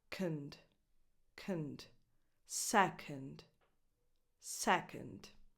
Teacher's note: the O in the other syllable, the one that is unstressed, is just a schwa.